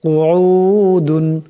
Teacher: এখানে বড় কাফ আছে আওয়াজটিকে গলা থেকে আনতে হবে